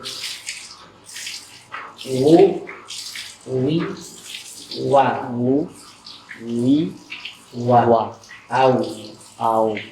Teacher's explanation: Huruf waw itu keluar dari asyafatan, dua bibir.